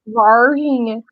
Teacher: região do triângulo mineiro também que é mais próxima de goiás então eles usam esse r retroflexo